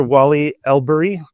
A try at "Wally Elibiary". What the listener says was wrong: Close. There's a B in there. So Wally Elibiary.